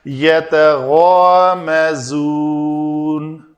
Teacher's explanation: غین کو پر کر کے الف کا ماقبل پر ہو تو پر پڑھا جائے گا، تو یہ غا ہوگا